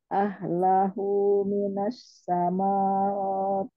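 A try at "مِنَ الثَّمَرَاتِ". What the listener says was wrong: Ya, yang panjang roknya, bukan mimnya. Bukan sama, tapi samarat.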